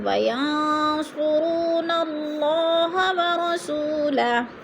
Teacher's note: واو ساکن سے پہلے سین کے اوپر پیش ہے تو ادھر واو مدہ کو ایک الف دو حرکات کے برابر ہم نے لمبا کر کے پڑھنا ہے، اور ہو الٹا پیش وقف کی صورت میں الٹے پیش کو ساکن کر کے پڑھتے ہیں۔ · اللہ سے پہلے لفظ نون کے اوپر زبر ہے تو الف اللہ کو پر کر کے پڑھیں گے